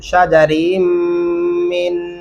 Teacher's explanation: शजरिन मिन यहाँ पे गुन्ना करेंगे